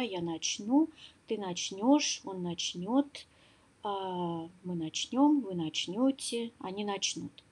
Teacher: во всех формах ударение на окончание